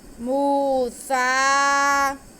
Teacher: میم پہ پیش اور واو ساکن، تو یہ واو مدہ ہوگی، اس لیے ہم میم کے بعد کو کھینچیں گے۔ آگے سین پہ کھڑا زبر ہے، تو یہ الف مدہ کے قائم مقام ہے، اسے بھی ہم کھینچیں گے۔